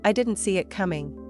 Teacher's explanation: coming ends softly, without overpronouncing the final g